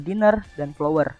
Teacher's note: Yang pertama ini first syllable stress, di mana stressnya itu ada pada suku kata pertama